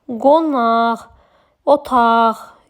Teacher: Sonu Q ilə bitən sözlərdə əsasən milli sözlərdə qı kimi yazılır, x kimi tələffüz olunur.